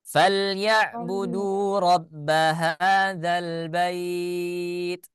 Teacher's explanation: Nah, kalau huruf ain itu termasuk ke dalam sifatul huruf. Huruf ain itu memiliki salah satu sifatnya sifat tawassut, ya, atau bainiyah. Ya, jadi makhrajnya tertahan akan tetapi suaranya keluar